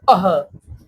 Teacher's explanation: जो विसर्ग आता है वो भी हम लोग की काकल्य ध्वनि में काउंट होता है